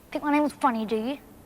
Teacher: So notice how the word you at the end gains strength? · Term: strong